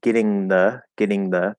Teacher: the only thing that you can do with that th you can either say it as a th or you could do a dental d